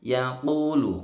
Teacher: Yaqulu, qafnya panjang 2 ketukan, agak tebal.